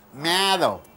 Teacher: M is a nasal consonant. It should come through your nose.